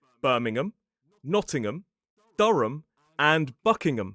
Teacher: But when it's a suffix at the end of a place name, we commonly pronounce it So the H disappears and the vowel reduces to a schwa.